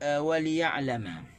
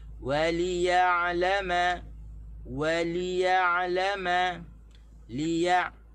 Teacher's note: di waw tu tak boleh tekan di lam, tekan di ya'lama.